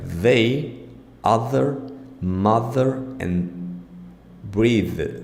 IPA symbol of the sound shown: ð